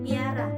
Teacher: Palatalisasi, yaitu bunyi sertaan yang dihasilkan dengan cara tengah lidah dinaikkan mendekati langit-langit keras atau palatum ketika bunyi utama diucapkan, sehingga terdengar bunyi sertaan Y. Misalnya, bunyi P pada kata piara terdengar seperti bunyi pi sehingga ucapannya menjadi piara.